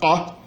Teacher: o som típico das línguas semíticas, que é o som uvular, ká, a oclusiva uvular, ká, não existe mais no amárico moderno, embora tenha uma letra para esse som devido à influência do aramaico e do copta, né?